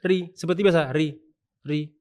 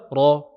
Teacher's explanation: makhrajnya sama-sama dari ujung lidah dekat dengan gusi